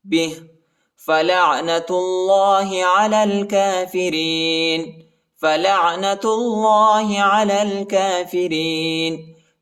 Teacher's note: لام کو عین کے ساتھ ملائیں گے، عین کو وسط حلق میں پڑھنا ہے